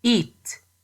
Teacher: when we say eat, T is unaspirated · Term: unaspirated T